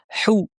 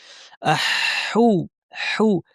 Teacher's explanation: হা সুন্দর করে গলার মাঝখান থেকে বলবো। হু, অনেকের হু বলতে কষ্ট হয়।